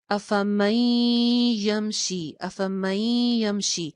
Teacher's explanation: नून की आवाज बहुत ही मामूली सी बाकी रह रही है